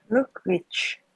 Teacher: Chờ này là chờ hữu thanh nha. Là mình đưa cái môi tới nè. Đấy, rung cổ họng. Luggage. Chờ nhẹ thôi, em làm như vậy nó thành chờ vô thanh là như vậy rồi.